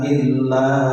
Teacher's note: dua setengah alif atau 5 harokat, dinamakan majais munfasil. Majais munfasil itu bila ada mat bertemu dengan hamzah tapi beda kalimat, beda kata.